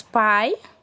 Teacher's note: tratar de um fonema não vozeado bilabial que é oclusivo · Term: fonema P